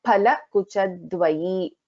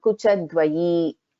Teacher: pha is a mahaprana